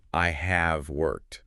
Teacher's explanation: When you say the full form, I have worked, you put an unnatural emphasis on the auxiliary verb, on the have.